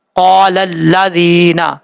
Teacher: زال کے بعد یا مدہ ایک الف کی مقدار لمبا کر کے پڑھیں گے